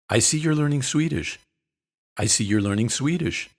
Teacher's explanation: notice the intonation you should sound a little surprised and interested